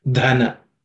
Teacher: the dha is the fourth letter in the third class of sounds. It has to be aspirated.